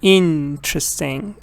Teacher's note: interesting stress is on the first part